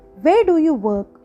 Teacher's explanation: మనం WH క్వశ్చన్స్కి కూడా ఫాలింగ్ టోనే యూస్ చేస్తాం